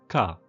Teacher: For example, the voiceless bilabial stop pa or the voiceless velar stop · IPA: [k]